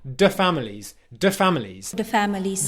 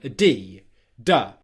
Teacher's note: For Melania, if in her native language she doesn't have a sound where her tongue comes out in between her teeth, she's done the most natural similar sound for her in her language, which is a D sound